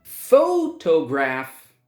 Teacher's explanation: Photograph, 3 syllables, and the first syllable is stressed.